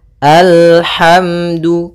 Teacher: Maka kita baca dengan al, kemudian al, hati-hati dalam lafal lam, sempurnakan makhraj daripada lam, ujung lidah naik melekat dengan langit-langit atas